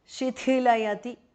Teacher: the first thi is mahapranah.